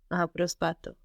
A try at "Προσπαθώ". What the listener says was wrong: Προσπαθώ. but with the accent on the ending with this verb, no?